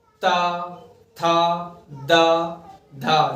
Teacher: दंत से जीभ टकरा रही है आगे। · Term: दंत्य